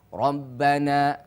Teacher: maka mulai sekarang baca ro dengan tebal atau tafkhim